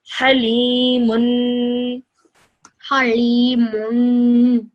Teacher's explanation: You kept that sound in your nose, that noon sound at the end for 2 seconds. Very good. And then you said this for 2 seconds again.